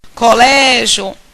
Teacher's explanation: Colégio. Veja que minha sílaba tônica é o Lé. Termina com IO.